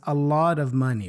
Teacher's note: the a in a lot is pronounced as a schwa